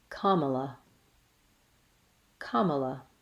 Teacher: Kamala has first syllable stress. Ka should be held longer, and Mala is said quickly. · The letter A says ah in the long syllable, ka